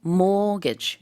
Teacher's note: 그리고 mortgage 이렇게 발음을 앞에 강세가 있게 하면 되겠고요. 가운데 T가 들어가는데 이건 발음하지 않습니다.